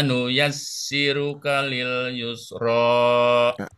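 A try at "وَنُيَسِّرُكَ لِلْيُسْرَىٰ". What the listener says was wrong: Wa nuyassiru. Ru-nya agak tebal sedikit. Kalil. Yusnya lebih jelas. Wa nuyassiruka lil yusra. Ru-nya coba. Ru. Wa nuyassiru.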